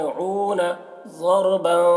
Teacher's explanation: ضاد کو بھی پر پڑھیں گے کیونکہ ضاد حروف مستعلیہ میں سے ہے